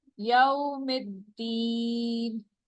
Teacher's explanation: یو 2 counts نہیں کرنا. یوم الدین تھوڑا سا اسٹریچ کریں گے، 1 کاؤنٹ سے ذرا سا آگے جائے گا اور 2 کاؤنٹ سے کم ہوگا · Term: واؤلین